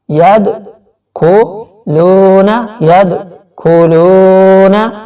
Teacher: واو ساکن سے پہلے پیش ہے، واو حرف مدہ ہے تو یہاں پر تھوڑا سا لو کو کھینچ کے پڑھیں گے، اور نون زبر نا کو نہیں کھینچنا، یدخلون فی نفی یدخلون فی، یعنی کہ نون زبانہ کو کھینچنا نہیں ہے، فی ساتھ ہی پڑھ لینا ہے.